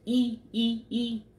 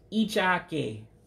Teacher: that is a very very high e sound